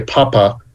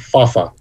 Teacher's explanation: the letter p is a plosive so if you say papa that releases about a factor of two more aerosol particles then saying the word fafa f is a fricative